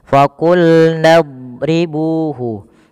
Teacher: huruf dot itu kan makhrajnya sisi lidah kita bertemu dengan gigi geraham atas. Maka dan pangkal lidah kita angkat.